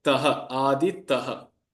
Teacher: So here ta is a. Therefore, the visarga, which has a characteristic ha sound to it, will again take on the same swara as the previous swara